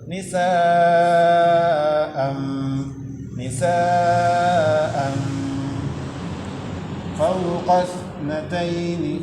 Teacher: Ketika membaca an-nya itu sudah posisi makhraj huruf fa, gigi atas dan bibir bawah. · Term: ikhfa